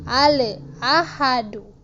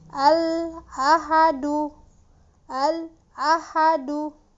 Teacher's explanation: ujung lidah kita bertemu dengan gusi bagian atas ya jadi ditahan dulu jangan langsung dilepas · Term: lam sukun